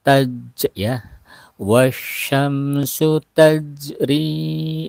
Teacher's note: ada jim yang mati namanya huruf qalqalah, ada pantulan qalqalah.